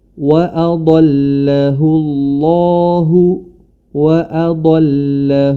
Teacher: kalau yang pertama dibaca tebal waahu waahahu dikarenakan sebelumnya berharakat domah